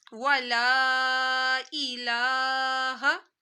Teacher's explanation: हमजा जेर ई खींचना नहीं है, ला को लंबा करना है